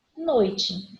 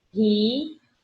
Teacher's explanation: O O e o I vão ficar na mesma sílaba. Então eu tenho um ditongo.